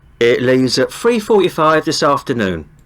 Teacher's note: you hear a little bit of like f like instead of th